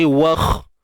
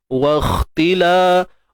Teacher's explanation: kita matikan terus kha ni, wakh, dengan menebalkan kha yang sukun ni. Wakhtila. Huruf kha ni huruf isti'la.